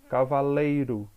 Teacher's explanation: Cavaleiro. Olha que foi que eu pronunciei com maior intensidade, o lei. Então, lógico, essa daqui será a sílaba tônica e ela será uma paroxítona, porque a penúltima sílaba está sendo a tônica, ok?